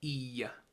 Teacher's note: So when we say coastland, it is pronounced e. It has that little bit of a y at the end.